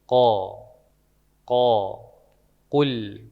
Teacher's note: Posisinya pangkal lidah ya, pangkal lidah. Setelah ujung tenggorokan. Setelah huruf kho, maju dikit ko. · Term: huruf ko